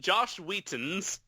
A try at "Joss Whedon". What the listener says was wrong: Don't pronounce it. Don't pronounce it with a T, because then I think of Will Wheaton, and then I think, shut up, Wesley. Like that.